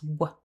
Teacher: It starts with the w consonant where we bring the lips together. That's w Then we have the short o vowel.